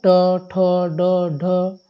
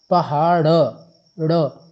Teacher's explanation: मूर्धन्य में क्या होता है, जहाँ पर हमको जीभ टेढ़ी करनी पड़े, जैसे ट वर्ण, ट वर्ग।